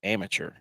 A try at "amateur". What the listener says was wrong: It's amateur. Amateur. I mean, you're pronouncing the tour like the PGA Tour, but it's amateur. TUR. AMATURE. Amateur.